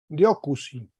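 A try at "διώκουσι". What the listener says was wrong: Perfecto, muy bien.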